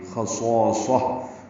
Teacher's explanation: خصاصہ، خا پر ہے موٹا پڑھیں گے، صاد پر ہے موٹا پڑھیں گے، صالح مدہ بھی پر پڑھیں گے، پھر صاد آیا پر پڑھیں گے اور اس کو تائے مربوطہ ہا سے ملا دیں گے. خصاصہ یعنی تائے مربوطہ سے ملائیں گے تو وہ ہا بن جائے گی اور اس پہ وقف ہوگا، وقف بالابدال کہتے ہیں اس کو، تا ہا میں تبدیل ہوگی.